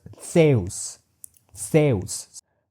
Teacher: your teeth are touched by the tip of your tongue while the creation of this dental tsa · the Greek Zeus is not palatal or alveolar Z. It is a dental Z. So rather than being Zeus, it was Theus.